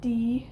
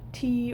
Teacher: stop so you can have a tea or a D so the D is the voiced one and the T is the voiceless one the difference between these is that the T doesn't have the